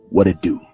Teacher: You see the T is flapped around to a D. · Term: flap T